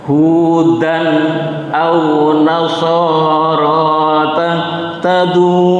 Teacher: Hudan au nasoro bacaan idhar, ya. Fathatain berjumpa hamzah. Jadi membaca hudan harus jelas.